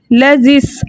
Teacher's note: ذال کو ہم سین کے ساتھ ملا کے پڑھیں گے